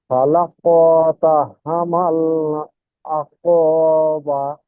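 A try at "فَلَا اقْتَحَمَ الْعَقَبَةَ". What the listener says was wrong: জি, এখানে একটু টান হয়ে যাচ্ছে। ফালাক তাহামাল আকাবা। ফালাক, এটা কলকলা করবেন যেহেতু কফ ত বা জিম দালের মধ্যে থেকে এখানে কফ এসছে। তো ফালাক তাহামাল আকাবা।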